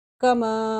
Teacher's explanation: کما، مد کی وجہ سے 3 الف کی مقدار لمبا کیا ہے ہم نے اس کو